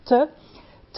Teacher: c'est une occlusive dentale